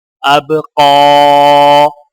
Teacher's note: حمزہ با زبر اب، قاف کھڑا زبر قا، اب قا. اب یہاں پر قاف کے اوپر کھڑا زبر ہے تو لہٰذا کھڑے زبر کو ایک الف کی مقدار کھینچ کر پڑھا جائے گا، اور وقف کرنے کی حالت میں بھی قاف کو ایک الف کے برابر کھینچ کر وقف کیا جائے گا.